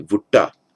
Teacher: it sometimes happens that the t becomes retroflexive